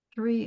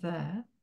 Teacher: Three is voiceless and there is voice